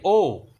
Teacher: আমরা যখন বলি ও, আগে বলি অ, পরে বলি উ, হয়ে যায় ও। এই অটা হয়ে যায় আমাদের কাছে কণ্ঠধ্বনি, আর উটা হয়ে যায় আমাদের কাছে উষ্ঠধ্বনি।